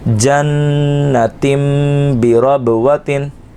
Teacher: تنوین کی جو تا دو زیر تین کی آواز تھی وہ نہیں آئے گی بلکہ میم کی آواز آئے گی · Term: اقلاب